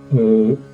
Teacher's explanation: the vowel sound is abruptly cut short, as in O